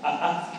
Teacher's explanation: Existe un signo que se llama saltillo, que usan prácticamente todas las lenguas de México, que representa una cosa que se llama la consonante oclusiva glotal, que es como un pequeño cortecito